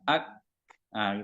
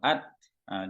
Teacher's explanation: Hamas itu kan nafasnya berembus banyak gitu ya